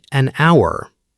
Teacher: we say an hour because the H in hour is silent. The word begins with a vowel sound, so an is correct.